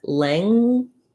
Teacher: you don't want to pronounce the g in the word length because the g is part of one sound the m sound